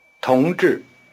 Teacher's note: The tone pattern is rising falling.